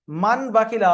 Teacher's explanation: তানবিন বা নুন সাকিনকে মিমের দ্বারা পরিবর্তন করে একালিক পরিমাণ গুণা করে পড়তে হবে। যেখানে দেখবেন তানবিন এসছে বা নুন সাকিন এসছে, ওর পরে বা এসছে, দেখবেন ওই তানবিন আর নুন সাকিনের উপরে একটা ছোট্ট মিম দেওয়া আছে, তার মানে ওই তানবিন বা নুন সাকিনকে বাদ দিয়ে ওই মিমটাকে পড়তে হবে। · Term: ইকলাব